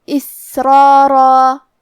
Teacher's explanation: یہ دونوں حرف الرا اور دونوں مد الف کا حکم ہے تفخیم، تو ہم یہ دونوں حکم کو بھاری آواز میں پڑھیں گے